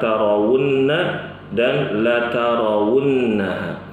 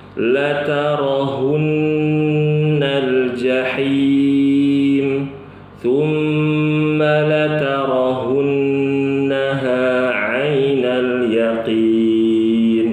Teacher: Kesalahannya adalah huruf wawnya ini diubah menjadi ha besar.